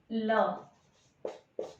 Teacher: जब ल बोलते हैं तो हमारी जीवा है ये दंत के थोड़े से पीछे हिस्से पे लगती है और साइड से हवा निकलती है। ठीक है, ल बोल के देखो कहाँ से हवा निकल रही है, साइड से, तो इसको कहते हैं पार्श्विक। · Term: पार्श्विक व्यंजन